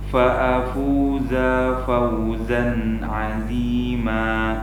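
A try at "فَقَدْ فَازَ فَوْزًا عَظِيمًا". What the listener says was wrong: Za yang pertama jangan dipanjangkan. Fa'afuza Jadi seperti yang sudah kita sampaikan ya di video-video sebelumnya, untuk memendekkan huruf zai ini kita punya momen ya, punya hal yang bisa kita gunakan untuk ancang-ancang kita agar zai-nya ini pendek begitu.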